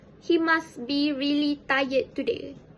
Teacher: The standard form of the pronunciation for this sentence is he must be really tired today, and the participle pronounced it as he must be really tired today. The t sound in must was dropped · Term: final consonant elision